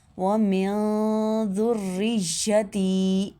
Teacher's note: کے ساتھ ادا کرنا، ومن ذریتی، ذال کو نرمی سے ادا کرنا، سیٹی کی آواز نہیں آنی چاہیے